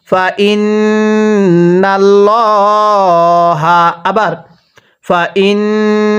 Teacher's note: আল্লাহ শব্দের পূর্বে জবর থাকলে আল্লাহ শব্দটাকে পোর করে পড়তে হয়, অর্থাৎ মোটা করে পড়তে হয়।